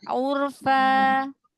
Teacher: Jadi bukan di tenggorokan berhentinya, bukan di pita suara. Kalau berhenti di pita suara, pasti dia ada hamzah.